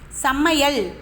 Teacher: அதே ஐகாரம் சொல்லுக்கு இடையிலும் இறுதியிலும் வரும்பொழுது ஒரு மாத்திரை அளவில் ஒலிக்கிறது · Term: ஐகாரக் குறுக்கம்